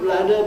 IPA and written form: ˈrəʊp ˋlædə (rope ladder)